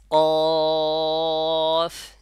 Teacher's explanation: ক বলার সময় জিহ্বার গোড়াটা ওই উপরে তালুর সঙ্গে নরম তালুর সাথে লাগতেছে আমার